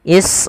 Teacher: Panjangnya sama dengan mad jaiz munfasil, yaitu 4 atau 5 harokat. Maka cara membacanya kita panjangkan huruf ra sepanjang 4 harokat. Israila, jangan dikurangi. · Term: mad wajib muttasil